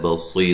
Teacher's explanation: صاد کو موٹا ادا کریں گے، اور صی یا مدہ ہے، اور وقفاً را باریک ہوگی